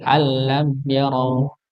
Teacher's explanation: mim sukun ini ketika bertemu dengan ya maka dibaca jelas